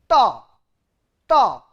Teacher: So, tip of the tongue curl back, ta. If the tip of the tongue is curled back and touches the upper cavity, that is why it is called retroflex sound.